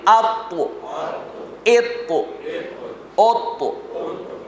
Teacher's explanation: تا کی آواز باریک ہوتی ہے، بغیر جھٹکے والی ہوتی ہے، اور تو کی آواز موٹی ہوتی ہے اور جھٹکے والی ہوتی ہے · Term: حروف قلقلہ